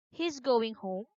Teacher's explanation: So, as we can see from our example, his going home is supposed to be a statement. But when we use the rising pitch, it will turn into a yes no question